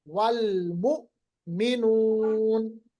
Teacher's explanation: حمزہ ساکن ہے، اس پہ جھٹکا ہوگا. جھٹکا کا مطلب ہوتا ہے آواز کو روکنا